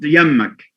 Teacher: the noon has changed to ma, and the same applied to ba, or the ba was dropped